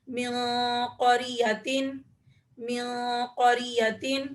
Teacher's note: نون ساکن کے بعد قوف آ رہا ہے، تو یہاں پر بھی ہم اخفا کریں گے